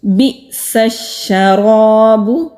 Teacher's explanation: حمزہ ساکن ہے، جھٹکے کے ساتھ ادا ہوگا، کٹ آف ساؤنڈ آئے گی، سین کو شین کے ساتھ مضبوطی سے ملائیں گے، را کے اوپر زبر ہے، خالی الف سے پہلے زبر ہے، را کو موٹا پڑیں گے اور الف مدہ ہوگا۔